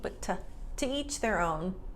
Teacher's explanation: But in real life, to is often reduced to ta.